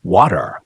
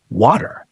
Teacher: In American English, the middle T often softens toward a D sound, water. In British English, that T usually stays crisp and clear, water. Neither is wrong, they're just different.